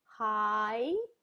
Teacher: hi has an ah and an e sound in it